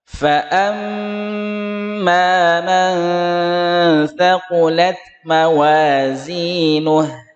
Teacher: Amma dengung yang lama 2 ketukan, mim dengan nun tasydid ya.